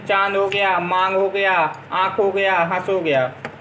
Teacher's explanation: जिनका उच्चारण नाक और मुंह दोनों से किया जाता है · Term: अनुनासिक